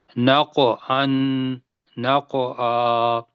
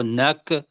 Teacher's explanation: اس کے اندر قوف آ رہا ہے، یہاں کلکلا کرنا ہے